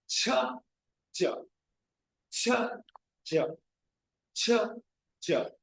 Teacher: the air does not escape suddenly. That is a prolonged release or a delayed release of the air. I'm not saying cha cha, no. · The tongue comes and touches the alveolar ridge. There is a complete closure.